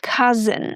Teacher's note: The O U makes the uh sound, ca, and then the S makes the z sound. The I is just a shwa sound. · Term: schwa sound